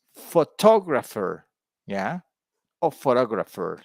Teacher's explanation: the second word the word stress is on the second syllable